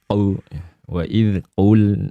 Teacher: Terlalu dalam qaf itu, jangan terlalu dalam. Nanti dia masuk jadi qu ya, qu wa idz qul.